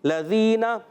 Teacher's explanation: لام مشدد ذرا رک کر ادا کریں گے